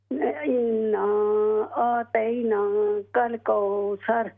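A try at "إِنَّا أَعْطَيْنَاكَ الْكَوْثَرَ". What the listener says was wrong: इन्ना अअतै, आ हमजा आइन ज़बर, आइन को क्लियर करके पढ़ें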